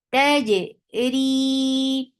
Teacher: There shouldn't be any ch sound in jim.